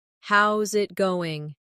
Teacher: How is it going? becomes How's it goin'? The is disappears, and the final G in going often softens. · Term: connected speech